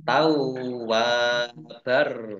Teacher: fathah tanwin bertemu dengan huruf roh, bacaan idgham bila gunah, masuk dengan tidak mendengung ya, masuk ke huruf roh ditandai dengan rohnya ada tasdidnya tetapi tidak mendengung.